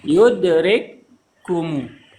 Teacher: Kafnya digabungkan jadi satu kaf seperti di situ. Seperti seolah ada tasydid. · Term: idgham mutamatsilain